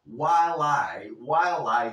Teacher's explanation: sí puedes soplar un poco la H si te apetece si no no importa